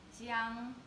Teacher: the second word, jiang, is the first tone